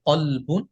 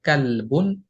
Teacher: তবে কফ হরফটা মোটা। কাফ হরফটা পাতলা। কফ যখন উচ্চারণ হয় তখন মোটা করে উচ্চারণ করতে হয়।